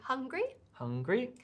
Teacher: it goes hung on the first syllable and then grease so it goes up from the first to the second syllable